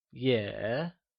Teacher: it is said with a falling rising tone also known as the third tone